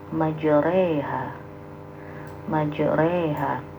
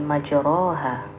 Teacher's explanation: pembacaan fathah yang miring ke kasrah ya. Dalam Al-Qur'an hanya terdapat satu contoh bacaan imalah, yaitu dalam surah Hud ayat 41 pada lafaz majreha.